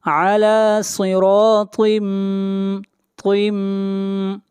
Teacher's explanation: علی صراط، صاد کو موٹا پڑھیں گے، صاد حروف مستعلیہ میں سے ہے، اور را کو موٹا پڑھیں گے، را کے اوپر زبر ہے. طا بھی حروف مستعلیہ میں سے ہے، طا کو موٹا پڑھا جائے گا. علی صراط طم، یہاں پر تنوین کے بعد اگلا حرف میم ہے اور میم حروف یرملون میں سے ہے، ادغام مع الغنہ کریں گے.